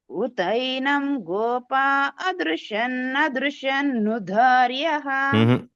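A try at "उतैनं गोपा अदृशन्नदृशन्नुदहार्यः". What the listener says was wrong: హ మిస్ అవుతుందామ రెండు కలిపేస్తున్నారు అక్కడ నుదహార్యః అక్కడ రావాలి స్పష్టత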